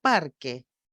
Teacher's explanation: siempre está acompañado de tilde Por ejemplo si yo digo parque todos pueden oír que la primera sílaba par es más fuerte se destaca más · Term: acento prosódico